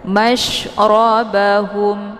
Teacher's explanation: Ba dibaca pendek, hum ada tanda waqaf namanya al-waqfu aula. Jadi cara bacanya mimnya tinggal disukunkan dan ditekan saja, tidak perlu ditahan.